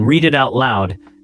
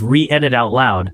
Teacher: The D from read slides right into it. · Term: linking